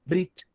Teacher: Então, quando você vai escutar nos círculos acadêmicos, tudo a língua hebraica, o pessoal fala berit. Mas quando um judeu fala essa palavra, fala brit, juntando aí a sílaba, fazendo uma coisa só, brit. Mas na prática, os judeus falam essa palavra especificamente como brit. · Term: sílaba maior